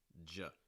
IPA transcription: dʒ